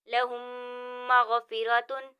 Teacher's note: یعنی دونوں میم آپس میں مل جائیں گے، ان کو گننے کے ساتھ ادا کیا جائے گا۔ تو یہاں پر دونوں میم آپس میں مل گئے، یعنی دونوں میم مدغم ہو گئے، اور ادغام شفوی کا یہی قاعدہ ہے، اس کو ہم گننے کے ساتھ ادا کریں گے اس طرح۔